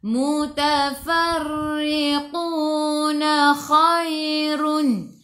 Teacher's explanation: Khu biar ada angin, biar menggelegak masuk ke dalam ya.